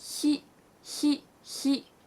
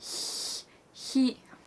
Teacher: You get this kind of hissing noise like he.